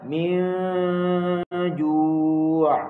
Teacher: Lepas tu nun mati jumpa dengan huruf jim. Kena baca min ju'. Dengung di sisi huruf jim lalu.